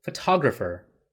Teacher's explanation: Remember to stress on the second syllable, photographer.